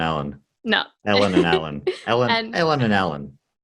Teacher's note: People from Melbourne, if there's an E before an L or an A before an L in a word, it's all the same vowel. So the boy's name Alan and the girl's name Ellen, yes.